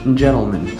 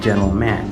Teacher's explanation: vowel of the man part is not spoken as eh, but instead with schwa. So it becomes gentleman instead of gentleman.